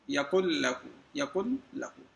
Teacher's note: ایسے ہی من لدنہ، من لدنہ، یکن لہو، کوئی غنہ نہیں ہے اس میں، لیکن ادغام ہے۔ ادغام ایک حرف کو دوسرے حرف میں ملا کر پڑھنا، جیسے کہ یہاں پہ نون کو لام کے ساتھ میں مکس کر کے پڑھ رہے ہیں، اس کا مطلب ہے کہ ادغام ہے۔